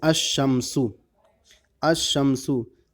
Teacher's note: جب ایسے لفظ پر الف لام داخل ہو جس کا پہلا حرف شمسی ہو تو الف لام کے لام کو حرف شمسی مدغم کر کے پڑھیں گے، یعنی لام کا تلفظ نہیں کریں گے